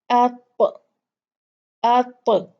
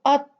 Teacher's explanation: جب یہ قا جو ہے حرف یہ ساکن ہوتا ہے تو پھر اس کو ہلا کر جھٹکے سے پڑھا جاتا ہے اپ، اپ، اس کو ات نہیں پڑھا جائے گا، کیونکہ اگر ہم نے اس کو ہلایا نہیں تو اس کا جو اس کی آواز ہے تا کی وہ نکلے گی نہیں، اس کے لیے ہمیں تھوڑا سا جو ہے وہ اپنے اس کے مخرج کو ہلانا پڑے گا۔ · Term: قلقلہ